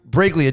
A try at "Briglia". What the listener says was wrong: You got like the second pronunciation. It's actually a silent G, so it's a Brillia.